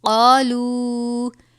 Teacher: قالو، چھوٹی مد ہے، 3 الف کے برابر پڑھیں گے